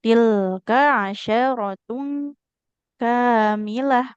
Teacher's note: Kafnya enggak boleh panjang. fathah enggak ada alif di depannya.